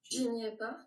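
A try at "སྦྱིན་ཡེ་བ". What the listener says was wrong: Ah, ça serait mieux de dire chi, parce que c'est pas, justement, c'est pas préfixé, il n'y a pas de lettre suscrite, donc c'est cha geguchi, chi n'y est pas, chi n'y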